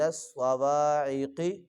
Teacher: سوائق نہیں، سواد ہے، موٹا کریں گے اس کو